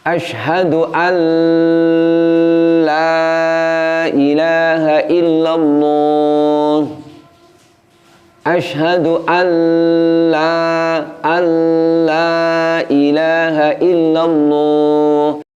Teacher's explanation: kita menahan bunyi nun sukunnya sehingga akhirnya muncul bunyi dengungnya